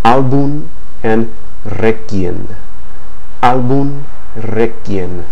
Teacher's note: Beware of the letter M at the end of words, because then it's actually pronounced like N